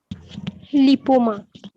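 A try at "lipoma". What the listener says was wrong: লাইপোমা। লিপোমা না, এটা লাইপোমা, এটা উচ্চারণটা হবে।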